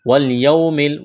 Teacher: واو لین ہے، اس کو کھینچنا نہیں ہے